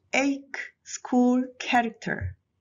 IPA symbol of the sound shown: k